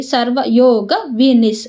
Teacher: ವಿಸರ್ಗದ ಮುಂದೆ ಸೃ ಇರೋದ್ರಿಂದ ಅರ್ಧ ಸ ಆಗುತ್ತೆ